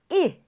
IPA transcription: i